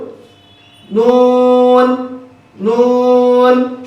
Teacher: জিহ্বার আগা তার বরাবর উপরে তালুর সঙ্গে লাগিয়ে নুন হরফটি উচ্চারিত হয়। নুন হরফটি পড়ার সময় আওয়াজ মিডিয়াম হবে, চিকন হবে, নিচের দিকে দাবিত হবে, বাতাস বন্ধ।